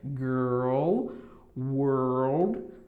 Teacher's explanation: Esse som vai ser a mistura do R, só que você vai fazer aquela coisa do L, né? Vai pronunciar o som do L no final, que tem esse som de L. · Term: o R com o L